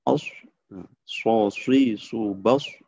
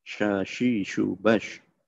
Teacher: Sifat huruf shad itu adalah shafir, ya, seperti bersiul.